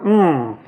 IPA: ɳ